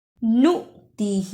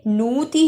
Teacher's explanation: نُؤْتِهِ، اسے نوتی ہی نہیں پڑھنا، نون پیش حمزہ نو، جس حمزہ پر جزم ہو اس پر تھوڑا جھٹکا لگانا ہے